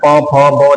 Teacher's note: देखो होठ बंद हो रहे हैं, बिना होठ टच किए आप प को नहीं बोल सकते। बोल के देखो, प मुंह खोल के प बोलो, नहीं बोल पाओगे। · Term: औष्ठ्य